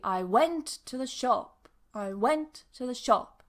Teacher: so went and shop are stressed and the others are weak